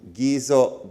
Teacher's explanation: this q is what's called a glottal stop